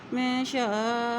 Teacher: यहाँ पर अल्लाह का नाम से पहले ज़ेर आ गई है तो अल्लाह का नाम बारीक अदा करेंगे। · यहाँ हमज़ा के ऊपर मद, इसको लंबा अदा करेंगे।